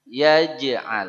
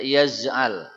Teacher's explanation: Dia punya hukum qalqalah, memantul.